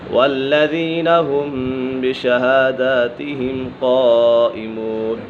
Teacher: میم سکن کے بعد حرف با گیا تو یہاں اکفاء شفوی ہوگا، یعنی غنہ کر کے پڑھیں گے